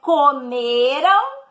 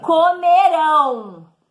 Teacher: No futuro, a sílaba tônica do verbo vai ser a última, oxítona. Então, é comeram e comerão, ok? · comeram, com R-A-M, a sílaba tônica é a penúltima, tá? Mais forte. No futuro, a sílaba tônica do verbo vai ser a última, oxítona.